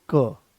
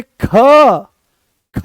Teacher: कोई ज्यादा जोर नहीं लगाना पड़ा, आराम से वो आ गया है क, कम प्राणवायु की आवश्यकता पड़ी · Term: अल्प प्राण